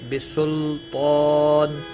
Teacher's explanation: بسلطان لام ساکن کو ہلانا نہیں، تو حروف مستعلیہ میں سے ہے، پر پڑا جائے گا